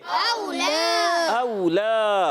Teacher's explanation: اور لام پر کھڑا زبر ایک الف کھینچیں گے